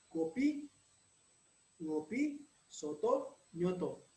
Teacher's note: di dalam bahasa Indonesia, simulfiks dimanifestasikan dengan nasalisasi dari fonem